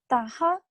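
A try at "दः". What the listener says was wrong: Daha. You have the problem of this ta and da, I think.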